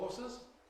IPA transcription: ˈhɔːsəz